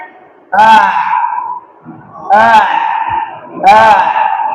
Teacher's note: Huruf A. ya berada di pangkal tenggorokan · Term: huruf ain